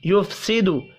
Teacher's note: فا ساکن پر قلقلہ نہیں کرنا